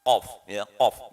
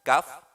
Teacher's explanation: Hati-hati antara qaf dan kaf ini sedikit sekali jaraknya ya. Kalau qaf ini pangkal lidah, kalau kaf kedepannya sedikit ya.